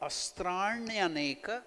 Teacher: you have to twist your tongue inwards, murdhanya, retroflex, na, just like the sound of the bell, tan, na.